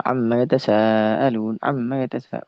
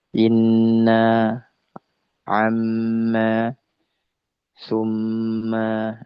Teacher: Jadi nun dengan mim ketika dia bertasydid maka sempurnakanlah ghunahnya dua harakat. Sempurnakanlah gunahnya.